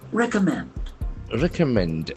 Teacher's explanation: Accent falls on third syllable.